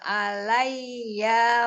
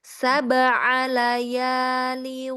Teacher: Tidak di layya ya, tidak ada tasdidnya. Jadi ringan.